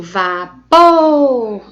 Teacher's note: o pô está sendo considerada a sílaba mais forte